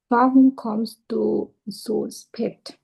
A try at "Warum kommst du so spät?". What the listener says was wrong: হ্যাঁ জু না সু, সু স্পেট।